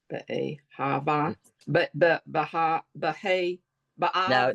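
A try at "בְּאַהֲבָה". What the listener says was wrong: No A. There's no A there.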